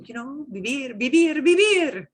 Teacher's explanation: V in English is a lot of tooth on lip action, and that does not happen in Spanish.